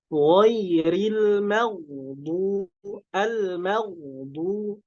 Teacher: Jangan sampai ketebalan yang ada pada huruf ghain itu mempengaruhi ketipisan yang ada pada huruf mim. Jadi harus dipisahkan ya.